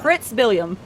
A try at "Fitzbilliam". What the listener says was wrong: No, it's like Fitzwilliam, but Fitzbilliam. There's no R.